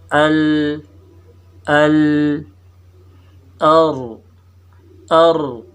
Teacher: زبان کی نوک سے ملا ہوا تھوڑا سا پیچھے جو حصہ ہے یہاں سے 3 حروف نکلتے ہیں